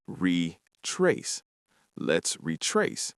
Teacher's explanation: The word retrace has the stress on the second syllable.